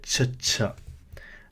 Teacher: the aspirated CH sound so we just add like another H to that CH